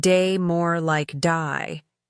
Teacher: Australian accent. They may say words like day, more like die, giving words a slight twist.